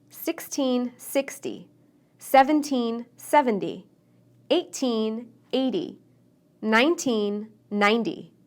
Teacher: both the stress and the sound of the tea are different we stress teens on the second syllable and tens on the first